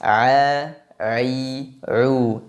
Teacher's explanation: Kenapa huruf ain disifati dengan istifal? Karena pada saat kita mengucapkan huruf ain, lidah kita datar, tidak terangkat. Maka akan menghasilkan suara yang tipis.